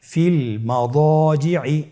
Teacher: দদের পরে আলিফ হরফটি রয়েছে, এখানে যেহেতু মোটা হরফের আলিফ হরফ রয়েছে তাহলে আলিফটিকেও মোটা করে পড়তে হবে।